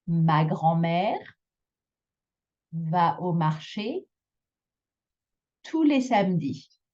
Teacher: that last syllable is the one that you're going to elongate a little bit. · Make sure to place the accent on the final syllable of each group. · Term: groupe rythmique